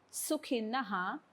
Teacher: विसर्गाच्या पुढे क्ष आलाय म्हणून विसर्गाचा पूर्ण उच्चार